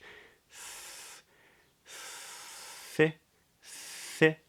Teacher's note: the tip of the tongue comes just up, either between the teeth or just behind the top tooth for the TH, voiceless TH. Th, short little I vowel.